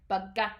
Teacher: that G sound isn't just a regular G you put a little bit more stress into it you kind of hold your throat a little bit tightly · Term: tensed or stressed letter